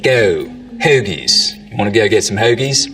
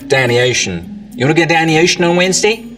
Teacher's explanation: Now, another thing that starts to happen as we get down towards Philly is that the goat diphthong starts to move forwards in the mouth